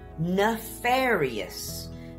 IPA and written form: nɪˈfɛːɹɪ.əs (NEFARIOUS)